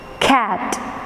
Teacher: The k comes along with a h sound. അപ്പോൾ അതുകൊണ്ട് നമ്മൾ ഈ ആസ്പിറേറ്റഡ് കാണിക്കാനായിട്ട് ഇങ്ങനെ ഹ് എന്ന് പറയുന്ന ആ ഒരു എയറോട് കൂടെ വരുന്ന ശബ്ദങ്ങളെ കാണിക്കാനായിട്ട് വി റൈറ്റ് ഹ് sound top of it to show that it is എൻ aspirated ഹ് സൗണ്ട്.